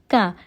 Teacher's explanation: زبان کے جڑ سے ادا ہوتا ہے، کیف پر زبر ہے نہیں کھینچیں گے، کا، اولائک۔